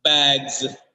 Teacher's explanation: The last sound is not s. The last sound is z here.